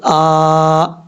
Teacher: حمزہ کے اوپر کھڑا زبر ہے، ایک الف کی مقدار اس کو لمبا کر کے پڑھا جائے گا